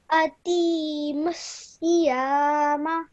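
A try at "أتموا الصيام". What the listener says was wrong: However, over here, make sure that you straight away join the ta to the meme. Don't hold the sound of t in your mouth. Straight away join it to the meme. Atimmusiyama.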